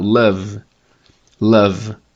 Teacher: Love. Love é super vozeado, né? Se você tiver com um som bom aí, vai até dar uma tremida no som, porque tem um chiado. Love. Emite bastante voz, né?